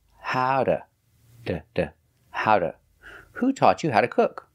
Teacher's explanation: So the to sounds like d, how to, d, how to.